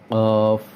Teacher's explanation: জিহ্বার গোড়া তার বরাবর উপরের তালুর সাথে লাগিয়ে ২ নোক্তাওয়ালা কফ